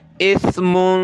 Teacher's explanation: इसमें हमने नाक में आवाज़ पैदा करनी है, जिसको इख्फ़ा कहते हैं। इख्फ़ा करना है यानी साउंड इन नोज़, नाक में आवाज़ पैदा करेंगे।